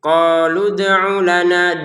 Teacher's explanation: dalnya dipantulkan ya, jangan lupa, jangan sekedar qalu ud'u lana.